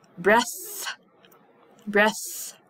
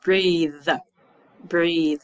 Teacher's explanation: breaths my throat does not make any movement but if I say breathe I can feel I can feel the vibration in my throat